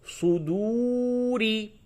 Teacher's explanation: تو اب یہ را کو پڑ کر کے پڑھیں گے وقف کی حالت میں، اور یوں پڑھیں گے تو صدوری، را زیر ری باریک پڑھا جائے گا